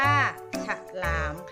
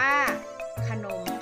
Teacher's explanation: ซึ่งพยัญชนะตัวแรกจะออกเสียงสระอะกึ่งเสียงพยัญชนะตัวหลังจะออกเสียงเหมือนมีหอนำนะคะ